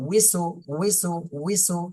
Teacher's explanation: এই যে ই এর সময় কিন্তু ঠোঁট গোল হয় না